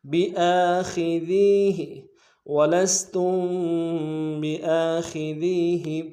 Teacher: خا کو موٹا ادا کریں گے، ذال کو باریک ادا کرتے ہوئے یا مدہ کے ساتھ ملانا ہے، یا مدہ کو ایک الف دار میں کھینچیں گے، ہا کو نرمی سے ادا کریں گے.